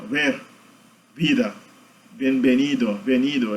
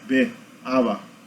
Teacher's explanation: Eles não fecham como o nosso B. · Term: Fricativa bilabial